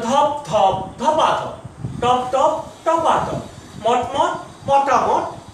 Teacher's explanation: এই যে একই স্বরের পুনরাবৃত্তি দূর করতে গিয়ে শব্দের মাঝখানে একটা স্বরধ্বনি চলে এসছে, সব ক্ষেত্রেই দেখতে পাচ্ছি আমরা একটা আ এসেছে, আকার বা আ। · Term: অসমীকরণ